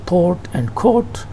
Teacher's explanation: The RP vowel in port and court is longer than in pot and cot. It is a low, mid, back, rounded. · As I told you before, it is quite low, it is quite mid, this one, and it is a low mid in the lower area, and it is back, and it is rounded vowel, articulated closer to cardinal vowel number 6. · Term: O sound